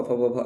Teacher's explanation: प फ व भ ऑलरेडी बता दिया ओठ या ओष्ठ से होता है